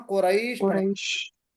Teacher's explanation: हरफ लीन होगा। अब हरफ लीन के बाद शीन पर वक्फ करेंगे, कुरैशिन को हम कुरैश पढ़ेंगे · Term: मद्दे लीन आरिद